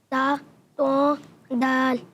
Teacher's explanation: ज़बान का सिरा और ऊपर के दांतों के जड़ से अदा होते हैं। ज़बान का सिरा और ऊपर के दांतों की जड़ से ता अदा होता है।